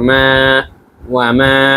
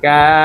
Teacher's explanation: যেমন এখানে আপনারা কিন্তু জবরের উদাহরণ কিন্তু দেখতে পাচ্ছেন, ওয়ামা জবরের বাম পাশে খালি আলিফ আসার কারণে এক আলিফ টান দিয়ে পড়তে হচ্ছে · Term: মাদ্দে তবাই